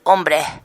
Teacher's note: Pero esto viene de la modalidad sevillana, de pronunciar Y tanto para la L como para la Y. O debilitar la S al final de palabra